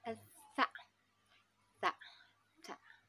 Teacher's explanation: Jadi bacaannya itu digigit ujung lidah kita di gigi kita.